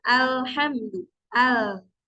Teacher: terhalang makhraj tadi kemudian kalau dari ro itu kebalikannya daripada lam Jadi kalau lam itu tadi keluar suaranya itu jadi dari samping-samping sisi kanan dan kiri lidah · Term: huruf lam